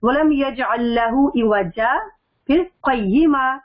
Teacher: یعنی اسٹاپ ہم کر رہے ہیں لیکن سانس ہمارا نہیں ٹوٹ رہا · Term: سکتہ